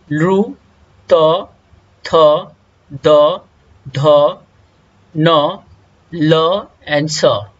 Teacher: इसका उच्चारण स्थान है दंत, तो इसीलिए इसे दंताह का कहते हैं, अर्थात डेंटल।